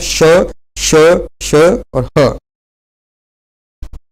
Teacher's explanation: जिनके उच्चारण में विशेष घर्षण के कारण मुख से हवा निकलती है। इसके अंतर्गत आते हैं श, श, श और ह। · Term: ऊष्म व्यंजन